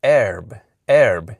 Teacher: you need to keep it uh forward and a bit raised in that uh short e position